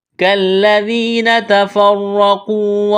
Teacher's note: را اور قاف کو موٹا کرنا ہے، واو مدہ ہے، ایک الف کے برابر کھینچنا ہے